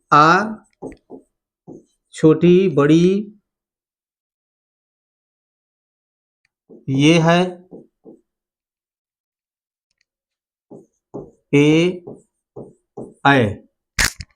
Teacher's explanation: ऐसे स्वर जिनके उच्चारण में हमारे मुंह के जो ओठ है वे वृत्ताकार रूप धारण नहीं करते हैं बल्कि फैलते हैं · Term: अवृत्तमुखी स्वर